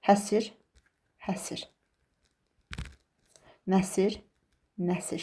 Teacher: iki müxtəlif qoşa samitin arasına qapalı sait girəcək